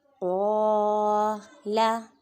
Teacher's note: قاف کو پر پڑھیں گے، حروف مستعلیہ میں سے ہے